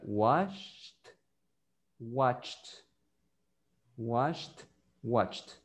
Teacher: Ajá, lo que pasa es que usted se está confundiendo con la D en el pasado. Entonces, los dos sonidos de la CH y la SH no tienen vibración, entonces significa que los dos verbos se van a pronunciar igual al final.